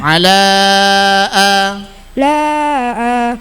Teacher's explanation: huruf mad bertemu hamzah di lain kalimat panjang lima harakat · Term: mad jaiz munfasil